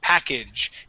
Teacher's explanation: we want to use an ah sound, an American whiny A